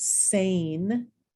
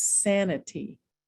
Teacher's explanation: This long vowel sound, sane, when I add an ending, suddenly it's sanity. My vowel sound changes.